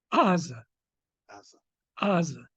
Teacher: the ayin is really a guttural ayin in the back of your throat down here. Jews who come from Arabic-speaking lands retain the ayin.